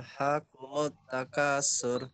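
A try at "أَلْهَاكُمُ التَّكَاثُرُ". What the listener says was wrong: Tuh, masih sur. Sur, coba. Sur. Agak ditipiskan. Jadi diperhatikan lidahnya. Lidahnya ditempelkan ujung lidahnya. Ujung lidah tempel ke ujung gigi. Sa. Sa. Dia tipis suaranya, bukan sa. Kalau sa itu tebal, dia tipis. Sa. Alhaakumut takasur. Sa.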